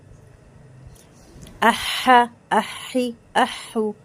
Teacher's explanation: حلق سے آواز آئے گی، ایئر باہر آئے گی، درمیان حلق سے آواز نکلے گی اور ایئر باہر آئے گی. احا، احی، احو.